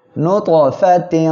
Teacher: তানবিন এরপরে ইকফার অক্ষর ফা আসছে, এজন্য নাকের বাসিতে নিয়ে গোপন করে গুন্না করে পড়বেন। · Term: ইকফা গুন্না